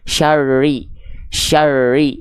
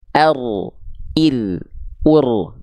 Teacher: hilang Syar Syar atau ro ri ru tidak seperti itu ro Walaupun dia sifatnya takrir getarannya tidak berlebihan tapi tetap dilafalkan dengan getaran yang jelas